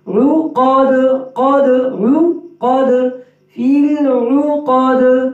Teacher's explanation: عقد، قاف میں ہونٹ گول نہ ہو، عقد نہیں. عقد عقد في العقد.